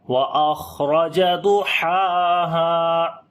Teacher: گے، سانس بھی جاری ہوگا، را کو بھی موٹا پڑھیں گے، ضاد کو موٹا پڑھیں گے، ہا کو گلے کے درمیان والے حصے سے پڑھیں گے اور لمبا بھی کریں گے ، اور ہا کو بھی لمبا کریں گے، الف مدہ ہے،